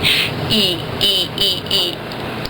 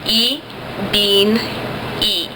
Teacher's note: And you make that, it's as front in your mouth as you can go, and it's as closed as you can go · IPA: [i]